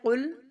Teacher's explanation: قاف بہت موٹا پڑھیں گے، لام باریک